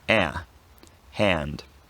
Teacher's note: So if it's immediately followed by n, and there's not another vowel following the n, then ah is pronounced with the tongue slightly higher in the mouth, and it becomes a diphthong. Ah becomes more like air, hand.